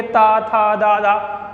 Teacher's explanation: तो जीभ जो है, जीवा है जो हमारी, वो ऊपर वाले दांतों पर टच होगी। आप बोल के देखोगे ता, था, दा, धा, देखो जीभ जा रही है ऊपर, जीवा जा रही है ऊपर, कहाँ पर, ऊपर वाले दांतों पे। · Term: दंत व्यंजन